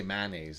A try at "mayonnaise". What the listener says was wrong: That's too many syllables.